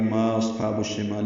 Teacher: ما بے مد منفصل ہے، اب اس کو ہم 4 حرکات لمبا کرتے ہیں